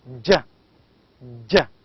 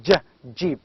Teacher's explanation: You can feel the sound d before j. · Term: Affricates